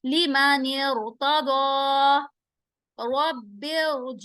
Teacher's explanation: कसरा मुफस्सल is द कसरा produced by connecting the preceding word with the sakin ra, dropping hamzatul wasl